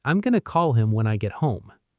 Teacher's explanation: Going to merges into one smooth sound, gonna. The transition between gonna and call is seamless. There is no pause, no break. Gonna call, one movement.